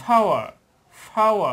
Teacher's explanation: শেষে যে আরটা থাকবে আরটা উচ্চারণ হবে না বললেই চলে